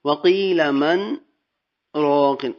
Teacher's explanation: اب من کے بعد میرا سانس جو ہے وہ ٹوٹا نہیں ہے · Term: سکتہ